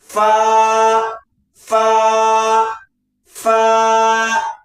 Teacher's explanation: यही ऊपर की दांत का किनारा, ऊपर का दांत का जो निचला हिस्सा है, ये निचले की होठ की तरी वाले भीगे वाले हिस्से में मिलाइएगा